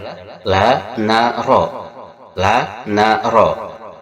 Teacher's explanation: huruf-huruf yang keluar dari ujung lisan